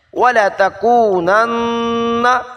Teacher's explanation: نون مشدد، غنہ ضروری ہے